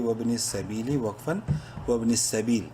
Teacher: یا مدہ ہے، با کو ایک کے برابر لمبا کریں گے